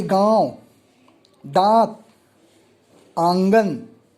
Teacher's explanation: अनुनासिक के उच्चारण में श्वास का कुछ अंश नाक से और कुछ अंश मुख से निकलता है। उच्चारण में लघुता ह्रस्व की स्थिति आती है।